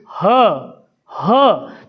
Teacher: झटके से क्या वायु हमारे कंठ को खोलती है गले को और बाहर आती है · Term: काकल